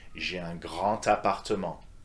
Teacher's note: So despite the D of grand, it's a T sound that you want to use, okay? Let's repeat that together. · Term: liaison